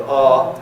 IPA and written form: ʌː (Uh)